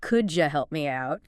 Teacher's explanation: Sometimes sounds blend together, like the D and Y and could you making a J sound.